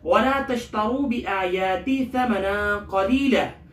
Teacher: بِآيَاتِ کے الف اور حمزہ اور یا دونوں کو ایک الف بقدر کھینچیں گے، کھڑا زبر ہے